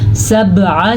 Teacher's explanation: با پہ کلکلا کیا ہم نے اور عین کے تلفظ کا خاص خیال رکھنا ہے۔